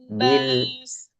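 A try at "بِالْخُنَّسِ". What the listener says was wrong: bil ada alif lamnya. uqsimu bil khunnas.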